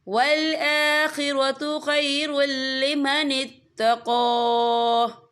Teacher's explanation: یا دیکھیں والآخرۃ خیر، را کے پر تنوین ہے، تنوین کے بعد جو ہے لام آ رہا ہے، اور لام جو ہے حروف یرملون میں سے ہے، تو یہاں پر ادغام ہوگا، تو ہم اسے بنا غننے کے پڑھیں گے